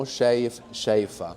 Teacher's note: So we have a long vowel and a short vowel there, shayif, and it's the short vowel that disappears when we put the a on the end